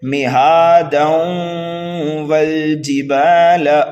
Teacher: تنوین کے بعد حروف یرملون میں سے واو آ رہا ہے تو یہاں پر ہوگا پھر ادغام، غنہ کر کے پڑھیں گے ہم 1 الف کے برابر